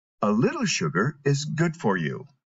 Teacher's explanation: when you're using it in a sentence to indicate something is beneficial you need to emphasize the word good